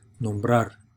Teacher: So we pronounce this nombrar, right? So you can hear that second syllable, that last syllable, being emphasized, right, being stressed